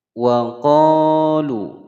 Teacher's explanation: qa panjang dua ketukan karena ada alif sebelumnya fathah, hukum bacaan mad tabi'i.